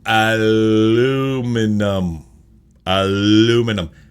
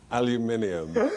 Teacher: They really do skip out on the second I in North America.